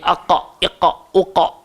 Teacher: Kalau kita sebut huruf qaf, dia punya aqa, iqa, uqa. So dia keluar dekat pangkal lidah.